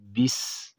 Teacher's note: سین کله د ژبې سر د لاندني غاښونو سرونو سره ولګي او پاسني پرې رابند شي، دې سره سین ادا کیږي، خو واضح اواز بیا راوباسو، بیس.